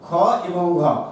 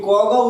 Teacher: দ্বিতীয় এবং চতুর্থ এই দুটো উচ্চারণে বেশি শ্বাসবায়ু লাগে, তাই এদেরকে বলা হয় মহাপ্রাণ